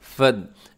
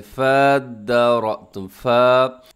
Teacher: अब बाज़ क्या करते हैं लोग कि इसको थोड़ा सा लंबा करके पढ़ देते हैं, फद्दारअतुम, फ़ा, तो फ़ा को दाल के साथ मिलाएंगे, बीच में अलिफ जो नहीं पढ़ा जाएगा। फ़ा ज़बर दाल फद, दाल खड़ा ज़बर द, फद, रॉ ज़बर हमज़ा रॉ, फद्दारअतुम।